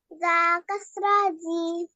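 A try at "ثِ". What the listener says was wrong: জা না তো, এটা কি? সা, সা কাসরা থি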